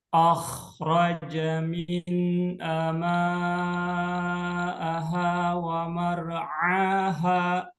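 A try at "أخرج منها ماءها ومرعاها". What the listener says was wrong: Oke, ini H-nya dipanjangkan ya. Akhraja minha aha wa mar'aha.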